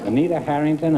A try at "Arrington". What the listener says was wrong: I'm Arrington. like Harrington without the H. It's like Harrington without the H.